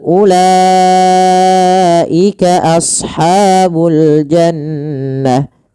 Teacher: U tidak boleh dipanjangkan, tidak boleh ula.